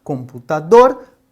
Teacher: Lembrando, estamos sempre contando da direita para a esquerda. Então, no caso de computador, computador, dor é a sílaba mais forte. Nós então consideramos essa uma palavra oxítona.